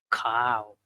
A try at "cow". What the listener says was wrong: You've almost got it. Calm is almost there, but cow, don't close your mouth.